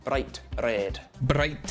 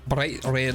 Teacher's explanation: roll the r just for one roll it's called a tapped R